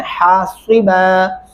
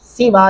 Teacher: حاصبا، سیبا نہیں کرنا، سین نہیں ایڈ کرنا، صاد پڑھنا ہے